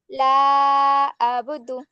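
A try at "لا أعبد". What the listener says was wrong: আবুদু, আ আইনের মাখরাজ কি? কণ্ঠের মাঝখান থেকে হয় না, তা কণ্ঠকে চাপাইতে হবে। লা আবুদু, আবুদু, আবার বলো। আ আ হামজা আইন জবর আ, কণ্ঠের মাঝখান থেকে। লা আ বুদু, আ বুদু। তুমি তো একটুও কণ্ঠ চাপাচ্ছ না গো, কণ্ঠকে একটু চাপিয়ে দিতে হবে।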